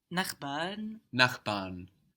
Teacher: Even though it's ending with an R, it's a vowel sound.